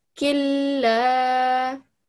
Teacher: So since the shadda is stronger than jazm, it will be, you will have to eliminate the noon, okay? Pretend it's not there, and just join the kaf with the lam, because lam is the one that's got a shadda on it, okay?